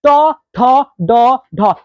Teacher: इसको बोलते समय जीभ जो है हल्की सी मुड़ जा रही है, इसलिए इसको कहते हैं मृधा